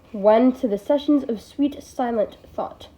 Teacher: The repeated initial S sounds in sessions of sweet silent create a soundscape to begin the poem. That sibilance is enhanced by the second S in sessions, and I've always suspected the th of thought. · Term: Alliteration